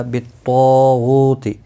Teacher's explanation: طا مستعلیہ ہے، پور پڑا جائے گا۔ طا الف بھی اس کے ساتھ میں، یہ بھی پور پڑا جائے گا۔ · غو واو مدہ بھی ہے، 1 الف کے برابر کھینچ کر پڑھیں گے۔